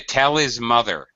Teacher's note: the H at the beginning of the word gets dropped pretty much always in conversational English · all of the pronouns that begin with h he his her uh these all get greatly reduced in spoken English the H at the beginning of the word gets dropped pretty